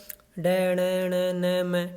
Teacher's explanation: बोलने से पता लग रहा है ना, नाक से बोले जा रहे हैं तो अनुनासिक है